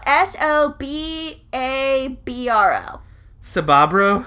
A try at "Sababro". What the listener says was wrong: Sababro. The B is silent. No, the B is silent. Why would you immediately pronounce the B?